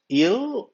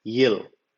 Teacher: And il, which is the 12th one, il, it has to be pronounced with the tip of the tongue touching the front end of the roof of the mouth